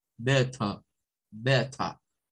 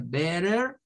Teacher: Eso significa inglés no rótico, un inglés donde la R al final de las palabras no suena, no tiene sonido